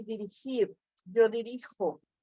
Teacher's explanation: la jota y la g las pronunciamos con la garganta